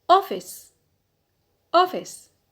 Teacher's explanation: So stress on the penult because we have a short vowel.